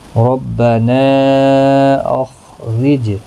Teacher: را زیر کی وجہ سے باریک پڑھا جائے گا، جیم ساکن پر قلقلہ ہوگا۔ نا الف مدہ ہے، ایک الف کی مقدار کے برابر کھینچ کر پڑھیں گے۔